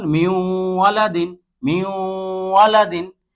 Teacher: নুন সাকিনের পরে ওয়াও আসছে, যার কারণে একে এই নুন সাকিনকে এই ওয়ার সাথে গুন্নার সহিত আমরা মিলিয়ে পড়ছি।